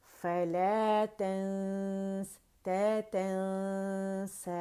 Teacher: نون کو چھپاتے ہوئے غنہ ریٹین کرتے ہوئے تھوڑی آواز منہ سے نکلے گی، زیادہ ناک سے نکلے گی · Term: اخفا